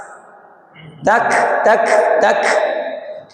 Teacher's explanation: Ingat huruf kaf ini beda dengan qof. Dia bukan qalqalah tapi bernafas.